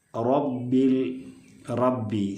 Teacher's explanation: പറ തറ ആ ഒരു ഉച്ചാരണം അല്ല അറബിയിലെ റക്കുള്ളത് അത് ഒരു മുഴക്കത്തിൽ റാവിന്റെ മധ്യഭാഗം അണ്ണാക്കിലേക്ക് ഉയരുന്ന സമയത്താണ് ആ ഒരു മുഴക്കം വരുന്നത് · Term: തഫ്ഹീം